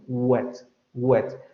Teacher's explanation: articulamos en los labios y articulamos con la lengua y el velo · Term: labio velar